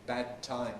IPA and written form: ˈbæd ˈtaɪm (bad time)